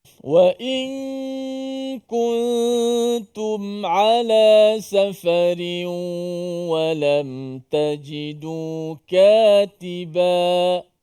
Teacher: kita masih lagi kekalkan nun pada gunnah di hidung. Tapi disembunyikan makhraj nun tu. Dengan hujung lidah tu tak kena langit, makhraj nun.